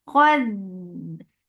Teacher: قد for fatah upon jaws attached with dal. As you will touch dal, your lips should be in a straight position and it has rakhawa, so there should be a flow of sound. قد make qa heavy but dal light.